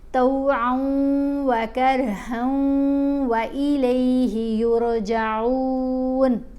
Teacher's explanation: اب آئین کو ہم نے واو سے ملانا ہے غنہ کرتے ہوئے